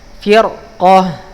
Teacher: ini ro-nya tebal berjumpa dengan huruf qaf ya